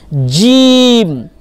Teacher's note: তো এই জায়গায় ভুল করা যাবে না জিমের এর মাখরাজ হচ্ছে জীভের মধ্যখান তার বরাবর উপরের তালু লাগিয়ে